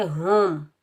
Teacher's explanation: اس ہا کو ہم سینے سے ادا کریں گے، ہا کو ہم میم ساکن کے ساتھ ملائیں گے، بغیر کھینچے پڑھیں گے ہم۔